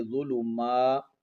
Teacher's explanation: میم پر کڑا زبر، ایک الف کی مقدار کھینچیں گے